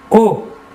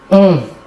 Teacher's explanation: L'air sortira entièrement par la bouche. Alors que pour le ON, l'air sortira par le nez.